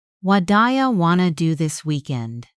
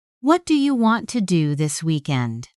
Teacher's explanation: The stressed words were do and weekend.